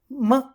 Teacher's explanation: we release the air through our nose that we feel the vibration in our nose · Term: nasal consonants